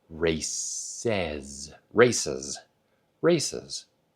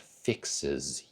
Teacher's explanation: Okay, so anytime you have a sibilant ending to a sound, you get a very slight vowelization before the Z sound, and then a very crisp, very clear Z sound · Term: IZ sound